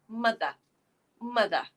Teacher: in British English we don't say the ER at the end